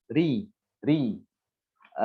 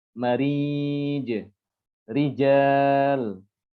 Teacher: Tipis itu berarti dia kondisinya tidak terlalu tegang ya lidah itu. Pangkal lidah tidak naik. Dan ya, pangkal lidah tidak naik dan seperti dalam kondisi apa ya? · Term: ro yang dibaca tipis